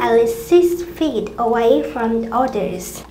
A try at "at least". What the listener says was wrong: At least 6 feet. Hình như bạn ấy thiếu âm T giữa từ at cái từ least. Thiếu một số cái âm nối. Chắc bởi vì có mấy cái âm T ở đây, cho nên làm bị líu lưỡi.